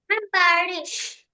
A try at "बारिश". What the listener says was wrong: हाँ, रिश. It's not रीश, it's रिश. बारिश. ठीक है. ये ऐसे प्रोनाउंसिएशन होता है, शॉर्ट साउंड.